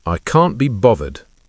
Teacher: in some British accents, you'll hear this pronounced bothered with a V sound instead of the th sound